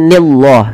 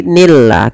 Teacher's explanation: Dan lafal Allah di sini dibaca dengan lam tarqiq.